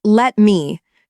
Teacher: When two sounds sit close together and share similar mouth movements, the brain merges them without permission. T and M are both quick, blunt sounds made near the front of the mouth. So instead of pausing to pronounce both clearly, the tongue slides straight through and let me collapses into lem.